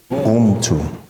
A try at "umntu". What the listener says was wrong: Umtu. You ain't open your mouth. Umtu. Umtu. Umtu.